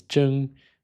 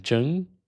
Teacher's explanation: That was not a rising tone. That was a very flat tone.